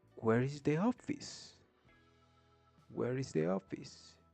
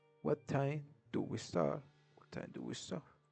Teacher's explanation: In English, we're using yes or no questions and the intonation is rising. And when we are using WH questions, the intonation is falling intonations